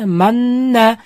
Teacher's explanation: sukunlik nun harfidan so'ng yana bitta nun harfi kelib qolsa, ikkita nunni birlashtirib, g'unna bilan o'qiymiz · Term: g'unnali idg'om